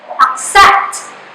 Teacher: The syllable ac is the unaccented syllable and the syllable set is the stressed syllable. So in pronouncing that, you have to give more emphasis to stressed syllables.